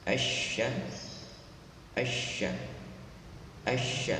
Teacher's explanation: ada shin pertama disukunkan, lalu shin kedua berharokat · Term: tasydid